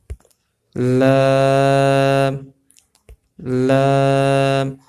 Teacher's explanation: کیف کیف، لام لام، لام کے اندر بھی دیکھیں زبان کہاں لگ رہی ہے، آپ اسی جگہ پہ زبان لگائیں گے، زبان کی نوک اوپر والے دانتوں کی جڑوں کو جو ہے مس کر رہی ہے، تو یہاں سے لام ادا ہوگا۔